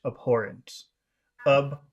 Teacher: Some people might say abhorrent with no H, and some people might pronounce the H. I think I prefer it if you pronounce the H.